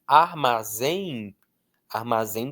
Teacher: A força está no zem.